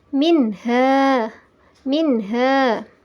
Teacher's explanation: izhar nya juga disebut dengan in her halqi cara membacanya adalah suara Nun dibaca dengan jelas dan tidak terpengaruh oleh huruf sesudahnya